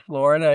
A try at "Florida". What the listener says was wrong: It's not Florida. It's Florida. It's DUH at the end. It's not DA. It's just duh.